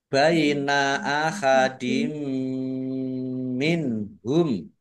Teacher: kasrah tanwin bertemu dengan huruf mim bacaan Idam bighunah masuk dengan mendengung yaitu mendengung mim ditandai mimnya ada tasdidnya mim tasdid dibaca mendengung atau gunah ditahan biar tampak dengungannya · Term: idgham bi gunnah